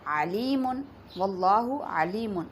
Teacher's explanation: علیم میں عین کا جو مخرج ہے وسط حلق سے ادا ہوتا ہے، اور یہاں علیم میں عین کو درست مخرج سے ادا کرنے کی بجائے علیم پڑھ دیا جائے، واللہ علیم، تو علیم کا مطلب ہوتا ہے دردناک، تو یہاں معنی بالکل تبدیل ہو جائے گا۔